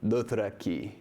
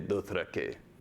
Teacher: His high vowels lowered to midvowels at the end of a word. So if he were pronouncing Dothraki, he wouldn't say Dothrakee.